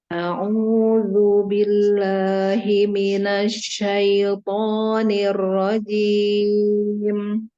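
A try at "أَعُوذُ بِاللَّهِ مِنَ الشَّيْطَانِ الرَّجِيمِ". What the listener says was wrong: tapi Dunya kayaknya Zu Zu kan lidahnya keluar ya lidahnya keluar sedikit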